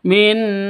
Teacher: jelas terang tidak boleh dipanjangkan tidak boleh didengungkan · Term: izhar halq